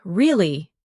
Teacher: your voice goes up slightly at the end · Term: intonation